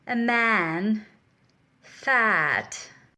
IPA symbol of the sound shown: æ